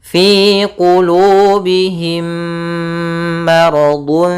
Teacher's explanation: Yaitu adanya mim mati bertemu mim. Caranya adalah kita memasukkan mim yang pertama kepada yang kedua dan ditahan suaranya. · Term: idgham mimi